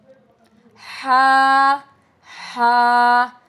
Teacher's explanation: दरमियानी हलक से हा निकलता है। From the middle of the throat its light letter. · درمیانی حلق سے ہا نکلتا ہے، from the middle of the throat, it's light letter, ٹھیک ہے؟